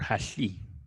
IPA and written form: haɬi (Harry)